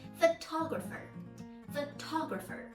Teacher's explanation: photographer is stress on the second syllable